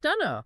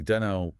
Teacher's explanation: The speaker eliminates the auxiliary verb do, reduces the vowel in don't, and simplifies the entire phrase I don't know into two quick syllables